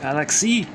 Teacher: they were stressing it on the second syllable.